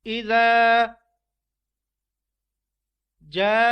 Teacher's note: اذا ذا کو ایک الف کے ساتھ کھینچنا ہے، یعنی تقریباً 1 سیکنڈ تک اس کو آپ نے کھینچنا ہے۔ اذا جاء، جا کو 5 الف یا تقریباً 5 سیکنڈ تک کھینچنا ہے۔ یہ مد آپ نے ذہن نشین کر لینی ہے، یہ بڑی مد ہے اور اس کو 5 الف کے برابر کھینچتے ہیں۔